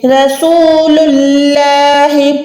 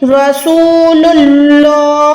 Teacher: جب بھی اللہ کے نام سے پہلے پیش آئے گا تو اللہ کے نام کو ہم موٹا کریں گے، پتلا نہیں کر سکتے، اس کو ہم ایسے نہیں پڑھ سکتے.